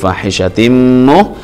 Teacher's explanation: idgham bi gunnah karena tanwin bertemu dengan mim